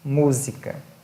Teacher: proparoxítonas agora sim aquelas que têm a antepenúltima sílaba tônica